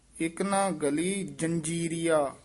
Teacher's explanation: ਗਲੀ ਪੋਲਾ ਹੀ ਬੋਲਣਾ ਗੱਲੀ ਨਹੀਂ ਕਹਿਣਾ ਇਕਨਾ ਗਲੀ ਜੰਜੀਰੀਆ ਉੱਤੇ ਟਿੱਪੀ ਲੱਗੀ ਹੋਈ ਹ ਜੰਜੀਰੀਆ ਨਹੀਂ ਕਹਿਣਾ